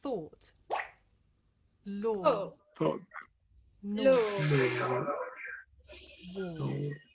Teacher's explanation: This is a long vowel sound. It's pronounced or.